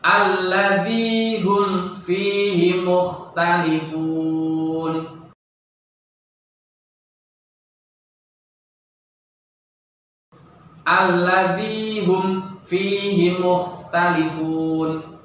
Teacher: Kemudian di depannya bertemu dengan huruf fa. Maka cara membacanya jelas, tidak ada samarnya sedikit pun, tidak ada mendengungnya sedikit pun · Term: idhar syafawi